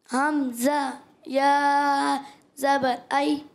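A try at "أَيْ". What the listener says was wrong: آئی جھٹکا نہیں. آئی نرمی سے. آئی.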